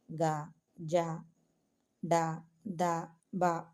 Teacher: తేలికగా పలకబడే వాటిని సరళములు అంటారు తేలికగా అంటే కొంచెం ప్రయత్నం అని అర్థం వీటికి నాదములు అని కూడా పేరు